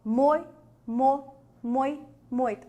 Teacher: o o é mais forte não é isso então você tem o o sendo vogal e esse I sendo a semivogal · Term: ditongo decrescente